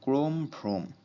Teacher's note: অধ্বনির সাথে রফলা যুক্ত থাকলে সেই অ এর উচ্চারণ ও এর মত হয়